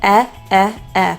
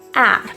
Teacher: When we compare that with ah, you can notice there's quite a bit more jaw opening.